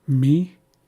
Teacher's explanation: We hold our breath very briefly and then we say me.